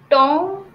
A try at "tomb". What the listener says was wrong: It's tomb. The B is silent, yes. Yeah, it is tomb. Tomb, okay? It is not tom, it's tomb.